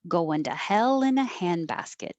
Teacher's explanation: Going to would change to goin'. So take off the ing and make it goin'. And then the to changes to duh, goin' duh.